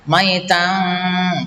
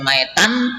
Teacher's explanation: ada tanwin fathah bertemu dengan huruf fa, namanya bacaan ikhfa, artinya samar. Maka di sini tanwinnya harus disamarkan. Maitang, tidak dibaca maitan, tetapi maitang fa gitu ya.